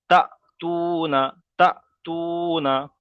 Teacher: হামজা সাকিনকে একটু ধাক্কা কিংবা ঝাটকা দিয়ে পড়তে হবে ধাক্কা কিংবা ঝাটকা দিয়ে পড়তে হবে যেমন দেখেন হামজা কফের ইক